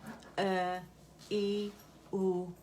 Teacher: یہ حمزہ ہے اور فار تھروٹ اقصی الحلق سے نکلے گا، حمزہ فتحہ اے، حمزہ کسرہ ای، حمزہ دم او، اے ای او، ٹھیک ہے۔